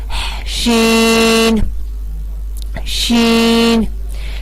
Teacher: شین کا مخرج بھی یہی ہے جو جیم کا مخرج ہے، وسط زبان اور بالمقابل اوپر کا تالو